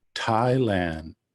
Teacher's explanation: my tongue sort of comes right up against the back of my front teeth · it's not thailand as we might think as english speakers it's an aspirated dental thailand my tongue sort of comes right up against the back